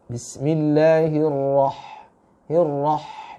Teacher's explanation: sedangkan huruf H itu istifal, maka dia pun harus dengan suara yang tipis. Bismillahirrahmanirrahim, dengan cara mencengirkan, ya, lagi-lagi mencengirkan mulut kita ke belakang.